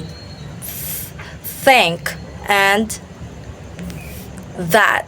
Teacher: So next we have dental the tongue touches the upper teeth